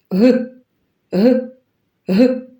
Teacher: Рот трішки відкритий, а язик заховався у глиб рота. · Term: звук Г